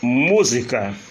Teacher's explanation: proparoxítona a sílaba forte é a antepenúltima